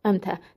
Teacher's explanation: Tələffüzdə ələrdən biri düşəcək, digəri uzun tələffüz olunacaq.